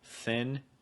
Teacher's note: the tip of your tongue right there makes contact with your top front tooth